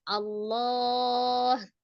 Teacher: Nah, karena lafaz Allahnya ini adalah di akhir, ada mad di la, yaitu di madnya bertemu dengan huruf ha, satu huruf yang disukunkan karena waqaf, maka lafaz Allahnya menjadi panjang, menjadi mad arid li sukun, panjangnya 2, 4 atau 6 harokat.